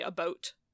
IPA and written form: əˈbʌut (aboot)